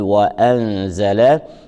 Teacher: النون الساكنة جاءت متبوعة بحرف الزاي، وحكمها مع حرف الزاي هو الإخفاء مع مراعاة الغنة